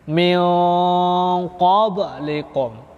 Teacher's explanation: letak makhrajnya paling jauh, makanya dia dinamakan ikhfa ab'ad